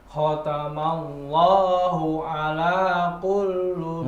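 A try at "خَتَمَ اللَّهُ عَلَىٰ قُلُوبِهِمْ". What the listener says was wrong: Oh, jangan dikulkan, nggak ada tasdidnya. Langsung qulu, ulangi dari depan.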